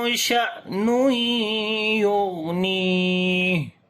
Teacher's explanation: تنوین کے بعد یا آگے ادغام غنے کے ساتھ کریں گے، غین کو موٹا پڑھیں گے اور اس کے اوپر صفت رخاوت ہوگی، آواز کو کنٹینیو کریں گے